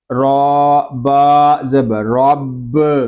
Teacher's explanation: را کو پر پڑھیں گے، را کے اوپر زبر آ رہا ہے اور با مشدد ہے، اس کو ہم جماؤ کے ساتھ ادا